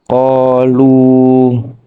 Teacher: Di dalam ayat tersebut ada lafaz qalu, yaitu terdapat huruf alif bertempat setelah harokat fathah. Cara membacanya dibaca panjang 2 harokat atau 1 alif. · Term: mad tabi'i